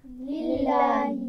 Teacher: لام سے پہلے زیر آ گیا نا، تو اس لیے ہم اس کو باریک پڑھ رہے ہیں، اس کو موٹا نہیں پڑھیں گے.